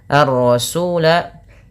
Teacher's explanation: alif lam syamsiyah karena langsung digamkan kepada huruf ro